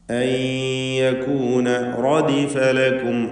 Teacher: സാക്കിനത നൂനും ശേഷം യാഉം ഇദ്ഗാം ബിഗുന്ന നാഖിസ് നൽകി യായിലേക്ക് നൂനിനെ ലയിപ്പിച്ച്